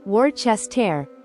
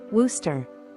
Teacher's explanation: a surprise the locals actually say it as Wooster yes Wooster it's almost like the middle part of the word disappears